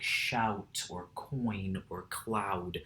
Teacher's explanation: the sound of two vowels being pronounced back to back in the same syllable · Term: diphthongs